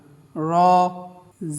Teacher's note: র জিহ্বার আগার পিঠ উপরের তালুতে গিয়ে লাগবে, এই হরফটি উচ্চারণ করার সময় টান হবে না।